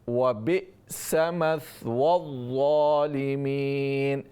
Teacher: حمزہ کی آواز جھٹکے کے ساتھ اور کلیئر کر کے اس کو پڑھنا چاہیے